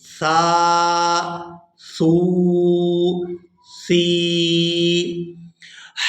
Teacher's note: سا ان حروف میں سے ہے جو ہمیشہ ہی نرمی کے ساتھ ادا ہوتے ہیں، تو سا کو ہمیشہ ہی نرمی سے ادا کرتے ہیں اور اس کی آواز میں سیٹی کی مثل آواز پیدا نہیں کرتے